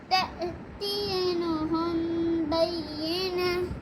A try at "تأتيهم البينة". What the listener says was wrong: تأتيهم تأتي इसमें नून नहीं है. हुमुल फिर से पढ़ते हैं. तأतियहुमुल बैयिनह. आखिर में ता मरबूता वक़फ़ में ये क्या हो जाएगा? कैसे दिखाना है? बैयिनह.